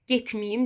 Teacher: Y bitişdiricidir. Bu artıq tələffüzdə ə keçir i-yə.